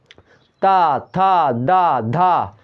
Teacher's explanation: ता तो दांतों में जीभ टच करती है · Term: दंतस्थ व्यंजन